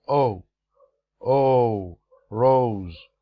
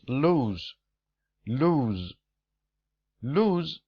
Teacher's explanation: the word rose includes a vowel sound long Oh Oh rose the second word is lose lose lose is totally different because the vowel sound is ooh here it's a true that they share the same consonant sound